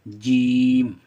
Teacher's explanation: जब जीम को पढ़ेंगे तो ज़बान जो है बीच का सिरा ऊपर वाले तालु से टच होगा।